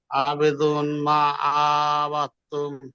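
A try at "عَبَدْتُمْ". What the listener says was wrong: আবাদতুম হয়ে যাচ্ছে, আইন টান হয়ে যাচ্ছে, আইনের উপর যাবার আছে, টান হবে না। আবাদতুম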